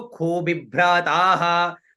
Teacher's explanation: तो खू का स्वर नीचे, बी का ऊपर, भ्र का बीच में,